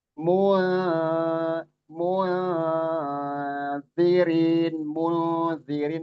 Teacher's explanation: Nun sukun bertemu dzal. Ikhfa. Ikhfa. Ya, ikhfa ya itu disamarkan dan ditahan dua harakat. Zirin rin mad thobi'i.